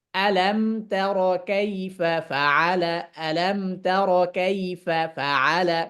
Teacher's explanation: ফাআলার ফাটাকে একটু উঁচু আওয়াজে পড়া, বুঝানো যে কাইফা একটা শব্দ, ফাআলা আর একটা শব্দ